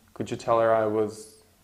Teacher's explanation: Was will be was, that's the schwa sound. Yeah, so we don't have was, but was.